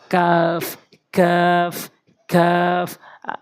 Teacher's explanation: জিহ্বার গোড়া থেকে একটু আগে বাড়াইয়া ওই অংশটা উপরে তালুর সঙ্গে লাগাবেন কাফ কাফ কাফ। আবারও বলছি, জিহ্বার গোড়া একটু আগে বাড়াইয়ে উপরের তালুর সঙ্গে কাফ।